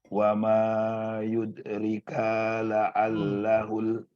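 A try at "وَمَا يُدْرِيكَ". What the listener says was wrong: Wa ma yudri, panjang yudri.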